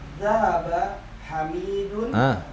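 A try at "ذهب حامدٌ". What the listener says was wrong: Penyebutan namanya, salah harokatnya.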